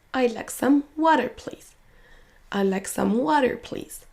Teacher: Le mot water va être prononcé plus fort, plus longtemps que les autres.